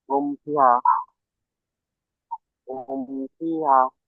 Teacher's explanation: মিম সাকিনের পরে বা এবং মিম ছাড়া অন্য অক্ষর অর্থাৎ ফা এসেছে, তাই মিমকে বিনা গুণায় জাহির করে পড়তে হবে, তাড়াতাড়ি পড়তে হবে।